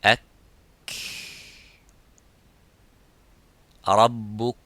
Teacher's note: But the kaf, there is some air coming. It doesn't stop slightly, but it makes that rakhawa, it makes the, makes that hams in the kaf.